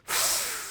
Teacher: It's a continuous sound where the air flows out continuously, and you produce the sound f.